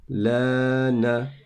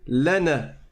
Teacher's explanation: on prolonge parce qu'il y a le Alif et ça donne Lana